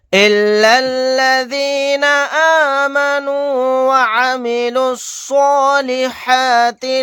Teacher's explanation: لام کو لام میں ملا دیں گے، یہ دونوں الف نہیں پڑھے جائیں گے